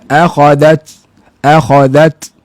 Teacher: Huruf ta dia tak berdesir tapi ada hamas.